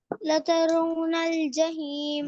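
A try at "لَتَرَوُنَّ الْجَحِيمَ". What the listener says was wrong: لترونل پڑھیں گے نا، واو کو وا کیوں نہیں پڑھتے؟ لترونل. آواز نہیں آ رہی، واو کی. لترونل.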